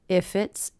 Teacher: If it's, and I do definitely hear those connecting together. If it's possible to sound.